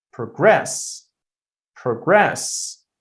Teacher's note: I'm putting the stress on the second syllable. So, in that case, that's a verb.